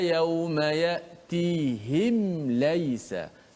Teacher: Maka berlaku izhar syafawi, jelaskan mim mati itu dengan cara betul-betul menutup rapat suara huruf mim tu tanpa kita memanjangkan dengung pada mim itu